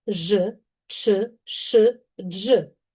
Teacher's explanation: Також завжди твердими є приголосні шиплячі.